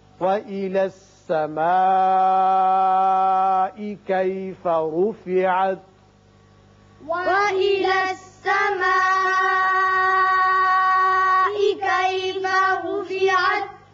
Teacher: یہ مد متصل ہے، 5 حرکات لمبا کریں گے